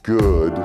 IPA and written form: gɨd (good)